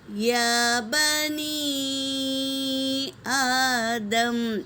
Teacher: حمزہ دوسرے کلمے میں ہے تو اسے 3 سے 4 الف کے مقدار کھینچیں گے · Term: مد منفصل